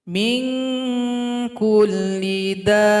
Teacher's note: panjangkan dulu dalnya enam ketukan baru tasdid